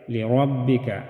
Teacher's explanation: را بھی موٹا ہوگا، را کے اوپر زبر ہے تو یہ موٹا ادا ہوگا